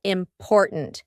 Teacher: in the middle, we have that glottal T, import. And then at the end, we have a stopped T, important.